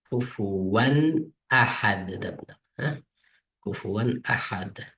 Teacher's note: Bu harfni kelib qolgan vaqtida ne qo'ymasak, kufuvanni izhar o'qiymiz.